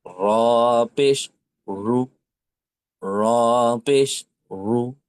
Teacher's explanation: একটু মোটা করে জবরে এবং পেশে এটা মোটা হবে